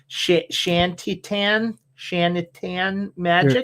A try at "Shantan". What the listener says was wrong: You're just adding multiple syllables at this point.